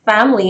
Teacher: there is no second vowel in there